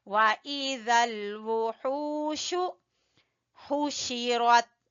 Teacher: ہا کو وسط حلق سے اور واو مدہ ہے۔ وَإِذَا الْوُحُوشُ حُشِرَتْ، حُشِرَتْ، را کو پر پڑھیں گے۔